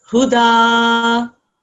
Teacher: Don't make the dal thick and heavy. It's just a thin sound